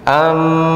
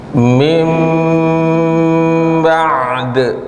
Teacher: Baik, ini iklab ya, bukan itu bila guna, yaitu nun sukun dan tanwin bertemu dengan huruf ba maka berubah menjadi huruf mim.